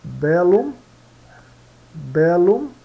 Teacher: Então quando tiver dois L se pronunciam em dois sons, tá? Em duas sílabas.